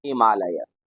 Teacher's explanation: हिम धन आलय बना हिमालय हिम में अ और आलय का आ दोनों को मिलाकर बन गया आ